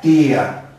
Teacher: lleva la mayor fuerza de voz en la i